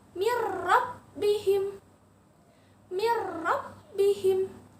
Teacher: Huruf nun sukun lebur lagi, masuk ke huruf ro. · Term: idgham bila gunnah